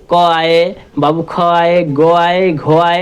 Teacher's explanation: हम जानते हैं कि क का जो उच्चारण स्थान है वो कंठ है।